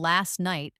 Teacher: the t sound in last can often disappear